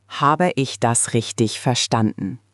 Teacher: Your intonation rose at the end, indicating a question, which is exactly right.